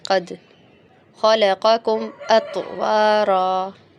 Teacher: ات کے بعد فوراً بعد ہمیں ہونٹ کو گول کرنا ہے واو پڑھنے کے لیے، اگر ہم احتیاط نہیں کریں گے تو کے پر زبر بن جائے گا، اطوارا اطوارا کر دیں گے ورنہ ہم، ٹھیک ہے. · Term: قلقلہ